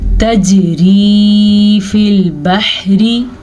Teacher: जीम के ऊपर कलकला हो रहा है क्योंकि जीम के ऊपर साकिन है।